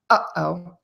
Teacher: feel how that air is sort of stopped in your throat you kind of close your throat off a little bit which stops that air uh oh that is a glottal stop so you're stopping the